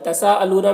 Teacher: تساءلون میں جو مد ہے اس مد کو مد متصل کہتے ہیں، اسے 3-4 الف کے برابر کھینچ کر پڑھیں گے. لونا یہاں پر واو مدہ ہے، ایک الف کے برابر کھینچ کر پڑھیں گے.